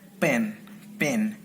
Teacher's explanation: Together, two lips are released instantly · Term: voiceless bilabial plosive